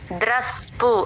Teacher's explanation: ఆ స ని ద్ర తో కలుపుతూ చెప్పాలి